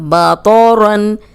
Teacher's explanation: तो को मोटा पढ़ेंगे, रौन भी मोटा होगा।